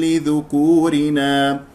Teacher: كسره اللام لا تنساها والراء مرققه مكسوره